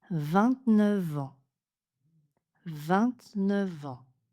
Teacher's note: 29 est prononcé avec une liaison en V